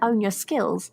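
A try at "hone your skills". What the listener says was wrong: With a H.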